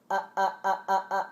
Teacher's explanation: when the glottis constricts it stops the air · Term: glottal stop